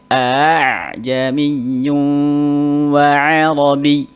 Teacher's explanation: Nah, hamzah yang kedua itu dibaca antara hamzah dan alif. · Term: at-tashil